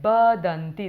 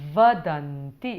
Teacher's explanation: It's a v sound, okay? The tooth on the lip.